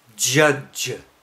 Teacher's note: a palato-alveolar voiced affricate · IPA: [ ʤʌʤ ]